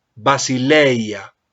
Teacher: lo coloco sobre la yota pero no voy a hacer la fuerza sobre la yota